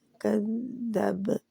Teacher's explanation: कद्दब बा के ऊपर कलकला हो रहा है